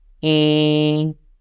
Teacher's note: The first tone goes flat